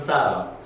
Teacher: in America, right, we people pronounce this T as a letter D sound. It's a soft D.